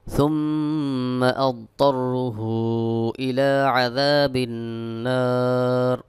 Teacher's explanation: এই হামজা আসার কারণে এক আলিফের জায়গায় তিন আলিফ টান দিতে হবে এটাকে বলা হয় মাদ্দে মুনফাসিল ثم أضطره إلى عذاب النار وبئس